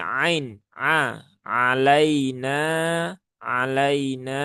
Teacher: Huruf ain ada di tengah tenggorokan.